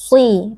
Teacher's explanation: Shad, huruf tebal, meskipun berharokat kasrah, tapi huruf shad adalah termasuk huruf isti'ala, di mana pangkal lidah kita naik dan suara kita naik menjadi tebal, bahkan dia termasuk huruf itbaq, di mana suara kita terkepung di langit-langit mulut, sehingga suara huruf menjadi tebal, maka harus kita tebalkan si, tidak boleh dibaca si, mu'si, ya, tidak tebal.